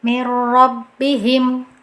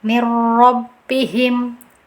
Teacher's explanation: Kita masukkan tanpa ada dengungan sama sekali. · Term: idgham bila gunah